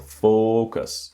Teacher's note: The strong syllable is the first syllable.